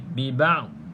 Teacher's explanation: hati-hati kalau huruf dad ni bukan qalqalah